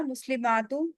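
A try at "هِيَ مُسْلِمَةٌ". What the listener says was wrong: मुस्लिमात, मीम को आप जरा सा भी खींच देंगे ना मुस्लिमात, तो क्या बन जाएगा? प्लूरल बन जाएगा। हाँ, लेकिन यहाँ मुस्लिमतुन।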